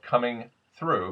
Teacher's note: th unvoiced th becomes an S